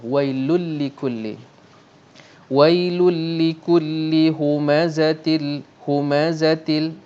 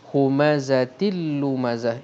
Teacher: kita idghomkan kita masukkan bunyi lam tuh dalam bunyi tanwin tanpa dengung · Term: idgham bilagunnah